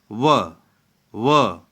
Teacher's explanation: दंतोष्ठ्य व्यंजन, दांत और ओठ दोनों से व पहले दांत जो है व, पहले बोलते समय जीभ जो है दांत में, फिर उसके बाद ओठ में व, ठीक है ना।